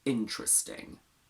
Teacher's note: The word interesting doesn't have a schwa between t and r